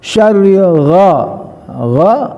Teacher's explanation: gha harus di tenggorokan atas dengan bawah ada longgar sedikit supaya ada getaran